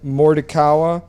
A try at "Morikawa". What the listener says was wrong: There's no T in it. I can tell you that.